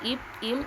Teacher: மேலுதடும் கீழுதடும் பொருந்த இப் இம் என்னும் எழுத்துக்கள் பிறக்கும்.